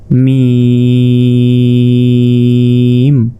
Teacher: ঠোঁটের ভেজা অংশ থেকে মিম উচ্চারিত হয়, মিম। মিমটা 4 আলিফ, মিম।